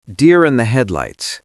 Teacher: Notice my T in headlights. It's a stop T.